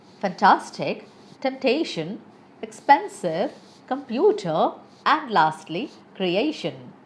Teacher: You have to stress on the second syllable.